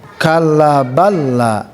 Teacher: Hanya masuk saja, lebur saja lam yang pertama masuk kepada lam berikutnya. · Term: idgham